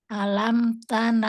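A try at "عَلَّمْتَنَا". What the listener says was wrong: alamtana karena ada tasjid alamtana kita ulang deh ya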